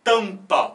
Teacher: o m já mostra uma possível preparação dos lábios para pronunciar o p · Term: som nasal